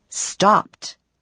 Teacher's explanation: First, there is T, as in stopped. When a verb ends in a voiceless sound, you pronounce ED as T, stopped.